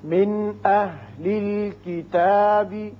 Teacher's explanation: یہاں نون پر اظہار حلقی ہوگا، آگے حمزہ بشکل الف ہے